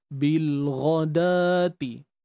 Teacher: da yang dibunyikan dengan dua harakat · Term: Mat asli